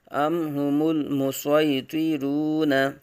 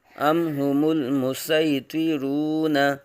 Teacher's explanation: صاد کے ساتھ پڑھیں گے تو صاد اور طا دونوں کو پر پڑھیں گے، حروف مستعلیہ میں سے ہے۔ سین کے ساتھ پڑھیں گے تو صرف سین کو باریک اور طا کو پر پڑھیں گے۔